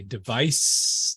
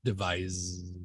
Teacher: if I put my hand on my throat and I say device the noun I should feel no buzzing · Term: unvoiced